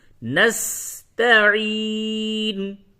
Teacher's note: نعبد ایاک نعبد و ایاک نستعین. نس سین کی ادائیگی میں ایک طرح سے سیٹی کی آواز ہوگی